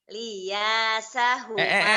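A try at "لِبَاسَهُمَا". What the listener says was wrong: Liba. Bukan lia, libasa.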